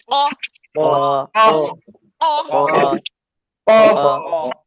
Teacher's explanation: জোরে করে ধাক্কা খেয়ে মোটা উচ্চারণ হবে